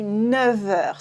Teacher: the F makes a V instead of an F sound. 9 heures.